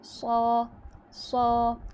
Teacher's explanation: اور اکثر لوگ کیا کرتے ہیں کہ الف مدہ جب موٹے حروف کے ساتھ آتا ہے تو الف مدہ کو باریک کر دیتے ہیں، جیسے کہ صا، صا، صاد موٹا ہو گیا لیکن الف مدہ موٹا نہیں ہوا